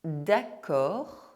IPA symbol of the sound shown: k